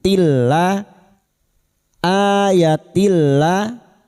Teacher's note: Yatil tak marbuto ini yang berharokat kasrah tanwin bertemu lam idgham bila gunnah masuk tanpa mendengung. Setiap nun sukun atau tanwin yang bertemu dengan 2 huruf ini yaitu huruf lam dan ro, maka kasar tanwin masuk pada huruf lam tanpa mendengung. Tilla, ayatilla masuk ke dalam alif, la kita panjangkan 2 harokat.